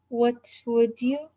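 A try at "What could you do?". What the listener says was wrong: Not would you. It's like a slight G. Slight G.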